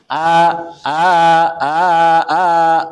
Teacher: Hamzah itu keluarnya dari tenggorokan bawah dan tidak ada hubungannya dengan bibir eh tidak ada hubungannya dengan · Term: huruf hamzah